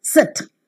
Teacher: the tongue is raised to a position just above the half close it is the front part of the tongue is used the lips are Loosely · the lips are Loosely spread and remain unrounded